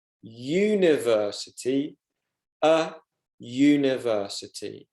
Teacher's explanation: because the U sound is pronounced as a Y